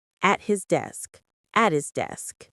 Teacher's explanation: The T in at the H in his can get a little messy. Often we drop the h sound in his and say at his